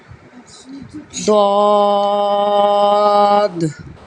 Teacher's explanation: زبان کی کروٹ اوپر کی داڑھوں کی جڑ سے سختی سے ادا ہوگا